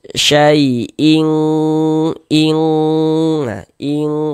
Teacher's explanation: kalau ikhfa hakiki ab'ad itu ya dia tuh condong berbunyi eng. Yaah. Condong berbunyi eng.